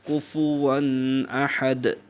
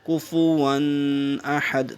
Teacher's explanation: دو زبر کے بعد آپ کا حروف حلقی میں سے ہے تو یہاں پہ اظہار ہوگا، فوراً ادا کرنا ہے، دیر نہیں لگانی